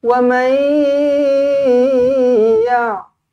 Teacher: Nun kosong bertemu dengan ya, dengungkan dua harakat, senyum. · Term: idgham ma'al gunnah